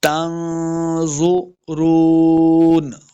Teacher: حینئذ تنظرون، پھر نون ساکن کے بعد آگے زوا بھی حروف مستعلیہ سے، اخفاء سے بھی ہے، مستعلیہ سے ہے تو موٹا کرنا ہے اور اخفاء سے ہے تو یہاں پہ ہم نے اخفاء بھی کر کے پڑھنا ہے۔